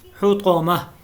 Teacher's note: یہ گولتا ہے، حالت وقف میں ہا بن گئی ہے